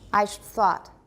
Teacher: the vowel was completely devoiced. We've just got a bunch of consonants left.